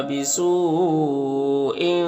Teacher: مد متصل کو 3 سے 4 الف کے برابر کھینچتے ہیں کیونکہ حمزہ اسی کریمہ میں ہے